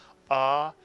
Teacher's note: in Sephardic Hebrew, the kamats is almost always making the same sound as the patach, ah, as in the word father